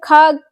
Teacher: अल्प प्राण किसको कहते हैं, जिन वर्णों के उच्चारण में मुख से कम श्वास निकले, जैसे का है, चा है, टा है। वहीं आप जब खा बोलते हैं तो श्वास ज्यादा निकलती है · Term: महाप्राण